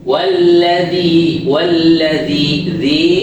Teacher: makhrajnya dza ujung lidah bertemu gigi atas atas ujung lidah dikeluarin dikit hanya sekedar menyentuh bukan digigit